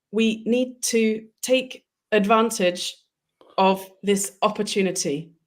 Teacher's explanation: the word to actually reduces to t. That's one thing that happens very often.